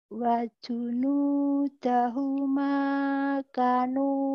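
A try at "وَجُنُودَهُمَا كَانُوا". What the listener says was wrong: Kanya panjang, Bu. Kalau kap gini, ini kap ada alifnya nih. Panjang ya. Udah bener, itu cuma kanya doang. Kapnya doang nih yang pendek. Harusnya panjang ya.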